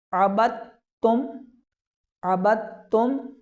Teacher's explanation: تو ہم متحرک حرف کو مشدد حرف کے ساتھ ملا کر پڑھیں گے اور درمیان کے اندر جو ساکن حرف ہوگا اس ساکن حرف کو چھوڑ دیا جائے گا۔ جیسے عبدتم کے اندر با کو تا کے ساتھ ملا دیا گیا، درمیان کے اندر جو دال ساکن موجود تھا اس دال ساکن کو چھوڑ دیا گیا